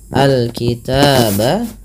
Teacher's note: alif lam qamariyah dibaca dengan jelas suara lamnya. Alkitaba taba ada fathah bertemu alif lagi kecil thabi'i.